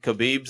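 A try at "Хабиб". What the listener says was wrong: Yeah, and by the way, you pronounce his name Habib. There's no K.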